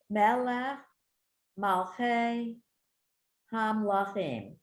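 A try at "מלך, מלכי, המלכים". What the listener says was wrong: Perfect. Beautiful.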